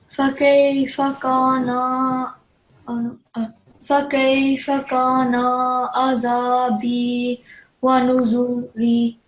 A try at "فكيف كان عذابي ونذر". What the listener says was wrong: When you're pausing, do you know how you pause on a word which carries a kasra at the end? So it will just take a sukoon, so it will be wanuzur. Just read the final word, wanuzur.